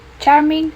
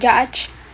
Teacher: ch with the j because they are similar sound but different voicing